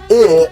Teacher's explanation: your tongue is more loose when pronouncing I, so it's considered a lax vowel